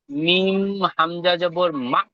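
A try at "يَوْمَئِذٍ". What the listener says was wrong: হামজার নিচে জের এসেছে, হামজাটি আলাদা হবে, মিম জাবার মা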